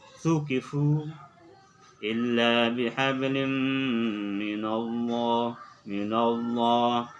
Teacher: lafzul jalalah yang kemudian dibaca secara tafkhim, tebal